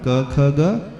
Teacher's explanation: क वर्ग का उच्चारण क ख ग कंठ से